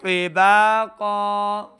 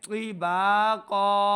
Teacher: طا حروف مستعلیہ سے ہے، طا کو موٹا پڑھنا ہے۔